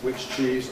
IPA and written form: ˌwɪʧ ˈʧiːz (which cheese)